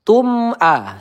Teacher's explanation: mim sukun bertemu alif ya izhar syafawi cukup Kita baca dengan jelas saja, tidak boleh kita tahan.